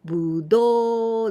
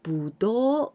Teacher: be careful with the intonation. Dun dun, going up.